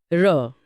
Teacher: र बोलते समय जीभ तालू पर कांपती है या लुढ़कती है इसीलिए इसे लुंठित कहते हैं।